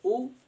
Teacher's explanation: जब आप बोलेंगे उ, आपकी ओठ बिल्कुल गोल हो जाएगा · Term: वृत्ताकार स्वर